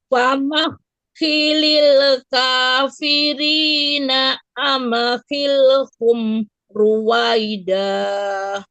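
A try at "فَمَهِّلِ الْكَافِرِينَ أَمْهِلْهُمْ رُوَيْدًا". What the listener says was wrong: Masih tuh itu tuh masih aja tadi semua mim tuh masih begitu tuh. Intinya bibir kita jangan lepas, jangan dilepas. Kalau pasti kol-kolah dia. Tapi kalau tahan dulu, hilhum bukan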